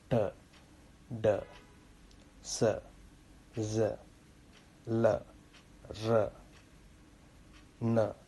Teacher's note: alveolar sounds, which are when your tip of the tongue is touching an area just behind your teeth. That region is called as alveolar region.